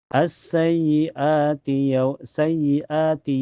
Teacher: Jadi hukumnya mad badal. dipanjangkan dua harakat.